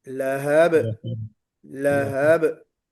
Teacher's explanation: बहुत हल्का सा कलकला करना है.